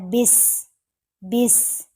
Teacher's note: سین جو ہے اس کی آواز سیٹی کی طرح تیز ہوتی ہے